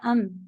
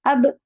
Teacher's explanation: ام کہنے میں بس آپ کے ہونٹ مل گئے اور میم ادا ہو گیا، لیکن اب کہنے میں اب اس میں تھوڑا سا پریشر، زور زیادہ آتا ہے، بس یہ فرق ہے۔